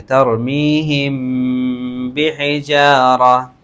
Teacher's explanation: اخفا شفوی، غنہ کر کر پڑھیں گے